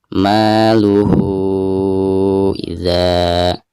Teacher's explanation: karena ha domir berhadapan dengan huruf hamzah maka dihukumi mad silah tawilah dan dibacanya 5 harokat.